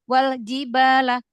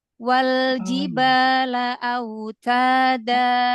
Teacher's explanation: Lam sukun jangan buru-buru. Lam itu punya sifat bainiyah. Jadi sedikit mengalir. Punya sifat inhirab.